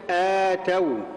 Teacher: يؤتون بهذه الكيفيه كلمه اتوا كلمه اتوا طبعا اولها مد بدل اولها مد بدل بمقدار حركتين